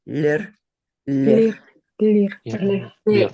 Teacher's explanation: we pronounce it with the tongue, the tip of the tongue, on the little bump behind our front teeth, and we say lir, lir, Lir. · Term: dental